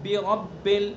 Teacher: برب کا جو زیر ہے کسرہ ہے اس کو معروف پڑھنا ہے